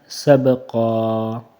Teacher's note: وقفن میں ایک الف کے برابر قاف کو کھینچ کر پڑھنا ہے، سبقا، قاف کو موٹا بھی پڑھنا ہے۔